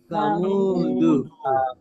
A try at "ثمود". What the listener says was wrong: সাটা নরম করে সামুদু